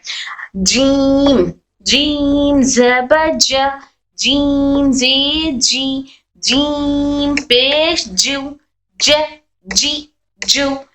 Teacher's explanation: जीम, शीन, या हमारे जबान के दरमियानी और तालु के दरमियानी हिस्से से अदा होते हैं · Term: हुरूफ शजरिया